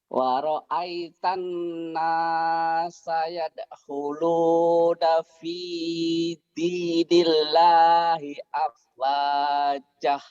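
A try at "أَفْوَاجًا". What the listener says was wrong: Afwajah. Kan ini panjang Pak. Ini matobi'i hijau, buahnya panjang. Ja-nya jadi panjang Pak. 2 patah, dibaca satu, jika dihentikan ini namanya mad iwad dan ada alifnya itu hijau tuh. Afwaja wa ra'aitan nasa yadkhuluna fi dinillahi afwaja. Panjang, tapi jangan ada haknya. Bapak masih ada haknya.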